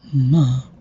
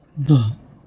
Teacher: Let's say if it is not a nasal, if it is something like a plosive, okay, plus plosive, then the sound changes from ma to ba, okay, which is voiced bilabial plosive